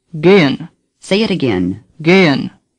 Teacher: The second E is pronounced like the second E in Bremen, the H is barely pronounced at all.